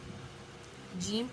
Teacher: وسط زبان اور بالمقابل اوپر کا تالو